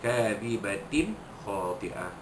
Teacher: Kadhibatin khati'ah, kadhibatin khati'ah, ta pada kadhibatin, ta bulat ta marbutah itu bertemu dengan huruf kha, maka hukumnya izhar halqi, bukannya tapi bertemu dengan huruf kha, maka dizahirkan, dinyatakan bunyi tanwin yang bertemu dengan huruf kha itu, tanpa dengung